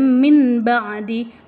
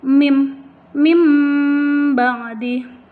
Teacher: tidak lagi min, nggak boleh min ba'di, tetapi dia berganti menjadi huruf mim ba'di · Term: iklab